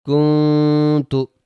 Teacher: نون جب بھی ساکن ہو تو آواز کو چھپا کے پڑھنا ہے، نون کی آواز چھپنی چاہیے اور ایک الف کے برابر غنہ بھی کرنا ہے، یعنی کہ اخفا کرنا ہے۔